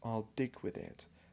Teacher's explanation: that plosive D, is forceful